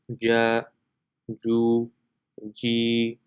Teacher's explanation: Next we have jim. So the makhraj of jim is the center of the tongue when touching the palate.